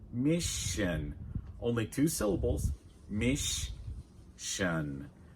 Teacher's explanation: In the word mission, the double S is pronounced like sh, like in should and wish.